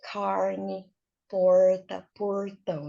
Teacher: Esse R retroflexo é aquele mesmo R do pessoal do interior de São Paulo. Quando fala assim, quando ele fica bem forte, ele vira carne, porta, portão, né?